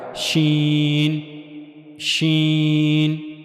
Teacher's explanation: نہیں بلکہ درمیان میں یہاں بھی تھوڑا سا فاصلہ رہے گا، تو زبان کا درمیانی حصہ جب منہ کے اوپر والے حصے کی طرف اٹھے گا تو وہاں سے ادا کیا جائے گا شین · زبان کا درمیانی حصہ منہ کے اوپر والے حصے کی طرف اٹھے گا، جا کر اس سے ملے گا نہیں بلکہ درمیان میں یہاں بھی تھوڑا سا فاصلہ رہے گا